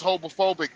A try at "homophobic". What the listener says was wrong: You mean homophobic? You sound like you said hobophobic.